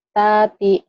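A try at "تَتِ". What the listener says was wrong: Tati, nggak ada yang panjang. Tati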